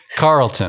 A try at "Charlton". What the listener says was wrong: Like Carlton with an H. Charlton.